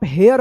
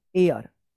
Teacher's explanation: एयर उच्चारण इसका सही होगा, एयर। ये एच जो है ना उच्चारण नहीं होता है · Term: एच साइलेंट